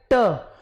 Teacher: जैसे मैं बोलूँ ना ट, तो जीभ ये रही, कहते हैं जीभ का जो फ्रंट पार्ट लगेगा ना वो मसूड़े पे लगता है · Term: मूर्धा